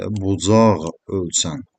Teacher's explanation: Özündən sonra saitlə başlanan söz gəldiyindən artıq q, ğ-ya çevrilir.